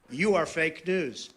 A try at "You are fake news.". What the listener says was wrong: He says it more nasally.